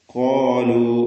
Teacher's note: കാഫും ദീർഘാക്ഷരമായ അലിഫും തഫ് ചെയ്ത് സ്വരഭാരത്തോടെ തടിപ്പിച്ചു പറയുക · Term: തഫ്ഹീം